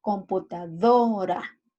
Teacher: En la sílaba do recae la acentuación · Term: sílaba tónica